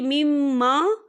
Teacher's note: یہاں پر میم مشدد ہے تو یہاں پر غنہ ہوگا